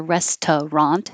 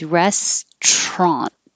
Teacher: this one we always drop the middle syllable